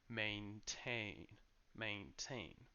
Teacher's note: the two sounds are exactly the same a a except that the second syllable is a bit longer because it carries the main stress so maintain maintain but what's interesting is that the noun has